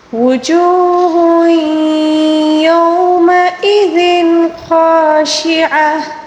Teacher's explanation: یومئذ، لال کے نیچے دو زیر ہے، تنوین ہے، تنوین کے بعد اگر حروف حلقی میں سے جو بھی حرف آ جائیں، یعنی کہ یہاں پر خا ہے، اس کو اظہار کا قاعدہ کہا جاتا ہے، اس میں اخفا نہیں ہوتا، ٹھیک ہے۔ خاشعہ، آخر میں جو وقف کے دوران گولتا ہے، اس کو گول ہا کے ساتھ تبدیل کر کے پڑھیں گے، اور جو تنوین آیا ہے تنوین کو بھی ساکن کے ساتھ تبدیل کر کے پڑھنا ہوگا، ٹھیک ہے۔